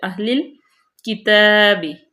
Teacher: کاف کو باریک، تا کو لمبا کریں گے